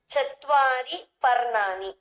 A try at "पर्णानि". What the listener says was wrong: चत्वारि पर्णानि। नानि न भवति, अत्र णकारः भवति न? चत्वारि पर्णानि, त्रीणि पर्णानि न?